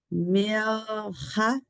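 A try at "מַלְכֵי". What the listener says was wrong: It's a straight line. It's not 2 dots. Malche. Malche, like a mal, like a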